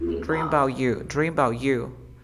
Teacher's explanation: Remember that about, you don't pronounce the a, you say dream about you